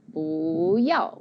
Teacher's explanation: we say 不要, which is 2nd tone, 4th tone. 2nd tone, 4th tone.